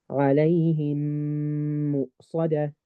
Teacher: Meme sakin is followed by another meme, then the two memes get merged into one big meme. Meme with a shadda, and the shadda with a ghunna. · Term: idgham shafawi